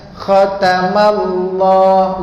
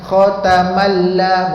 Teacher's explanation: Bila tebal lam ni, lidah kita akan dia melengkuk sikit. · Sebab sebelum tu balik atas khatamallah, lam tu kena tebal, bukan khatamalla, bukan malla, mallah. Yang tebal adalah lam, bukan mim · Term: tebal pada lam